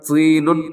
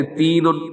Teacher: اب طا ہمیشہ موٹا پڑھا جاتا ہے اور تا ہمیشہ باریک پڑھا جاتا ہے۔ طا کی دوسری صفت یہ ہے کہ اس میں قلقلہ بھی ہوتا ہے جب یہ ساکن ہو، لیکن تا میں قلقلہ نہیں ہوتا۔